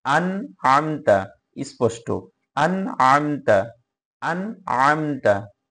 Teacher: এখানে স্পষ্ট করে পড়তে হবে, নুন সাকিনের পরে আইন আসলে অবশ্যই অবশ্যই অবশ্যই স্পষ্ট করে পড়তে হবে। আন আমতা, নুনটা কোনোভাবে গোপন হবে না।